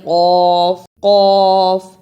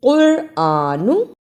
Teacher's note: قاف پیش را، قر، الف کھڑی زبر آ، نون پیش نو، قرآنو۔ یہاں قاف اور کاف کا فرق سمجھنا ہے، اسے ہم قرآنو نہیں پڑھ سکتے، قاف کو موٹا پڑھنا ہے۔